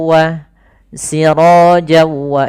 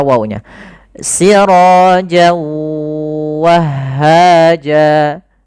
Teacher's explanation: tanwinnya awalnya bunyi n nah kemudian ketemu wau maka n-nya hilang masuk ke wau jadi wnya double wa sirwa itu langkah pertama Langkah kedua ditahan gunahnya tahan suara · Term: Idgham bhunah